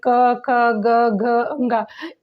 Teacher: इसका उच्चारण जब हम करते हैं तो केवल गले से ही घर्षण होता है और मुख से ध्वनि बाहर आ जाती है। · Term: कंठ्य